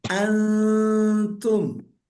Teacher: Bunyi nunnya tidak jelas. Bunyi huruf selanjutnya pun tidak begitu jelas. Tapi kadang ada seperti bunyi huruf yang berikutnya. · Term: ikhfa hakiki